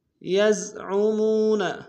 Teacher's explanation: الی الذین یزعمون، یزعمون، یا کو زا کے سامنے لائیں گے، عین کو گہرائی سے ادا کریں گے